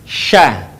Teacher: Diucapkan, mengalir udaranya, dan mengalir pula nafasnya. Bahkan ketika melafalkannya, menyebar nafas dan udaranya yang disebut dengan tafasyi.